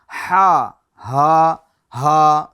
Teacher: درمیان حلق سے ادا کرنی ہے